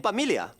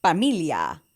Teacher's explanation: Often, Filipinos would substitute an F with a P.